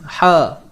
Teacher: Keluarnya huruf ha ni daripada tengah kerongkong. Okey, tengah kerongkong. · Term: ha pedas